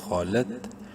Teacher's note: امت قد، خو زبر خو، منہ بھر کے پڑھنا ہے، بولڈ لیٹرز میں سے ہے خو. لام تا زبر لت، خولت.